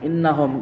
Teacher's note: Innahum gunna musyaddadah karena ada huruf nun yang bertasydid. Cara membacanya masuk dengan mendengong.